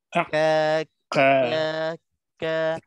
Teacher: kita letak lidah nih yang bahagian pangkal lidah ke depan sedikit dia bukannya ke dalam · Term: kaf